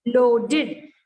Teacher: ये ed का sound इड बनेगा.